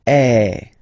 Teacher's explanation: So if you combine this vowel A with the vowel I, okay, you will get the sound E. So really open E.